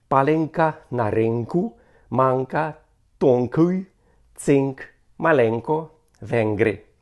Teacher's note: н перед к і г стає валярним